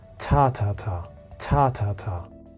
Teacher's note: We are going to carry stress in the first syllable